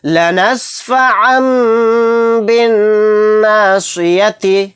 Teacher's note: تو یہاں پر دیکھیں تنوین ہے، دو زبر ہے، دو زبر کو تنوین بولیں گے، تنوین کے بعد با آ گیا تو یہاں پر بھی اقلاب کا قاعدہ ہو رہا ہے، یعنی عین دو زبر عن کو جو کہتے ہوئے لاسٹ میں نون کی آواز آ رہی ہے اس میں نون کی آواز نہیں نکالیں گے، عین کو چھوٹے میم میں ملا کر غنہ اور اخفا کے ساتھ پڑھیں گے۔